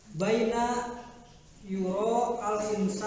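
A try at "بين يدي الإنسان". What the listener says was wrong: Yurol. Yuro. Yurol. Tadi teh aya coreknya. Teh corek teh huruf shod teh. Huruf shod. Artina teh wasol. Di lamun teh tong dibaca alifna langsung. Entong al insan tapi yurol insan.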